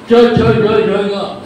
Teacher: जिभेचा मागचा भाग हा टाळूच्या मागच्या भागाला लागतो